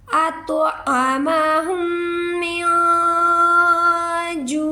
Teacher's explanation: आइन की आवाज़ निकालेंगे गले से, हलक से, अतअमहुम मिन जू', लास्ट पर आइन की आवाज़ आएगी।